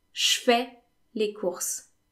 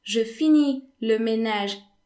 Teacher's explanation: So, je in French is often pronounced sh. So, for example, instead of saying je fais les courses, I'm doing the shopping, most French people would say je fais les courses, je fais, as if je was spelled S. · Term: Je pronounced sh